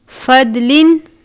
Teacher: فضلن دعاد کو دال کی طرح نہیں پڑھنا، دعاد کو پر کر کے پڑھتے ہیں کیونکہ دعاد حروف مستعلیہ میں سے ہے۔ فضلن تنوین ہے، اس کے بعد عین ہے، عین حروف ہلکی میں سے ہے، اظہار کا قاعدہ لگتا ہے یعنی تنوین پر غنہ نہیں کریں گے